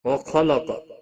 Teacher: وَخَلَقَ، خا اور قاف دونوں حروف مستعلیہ میں سے پر پڑھے جائیں گے۔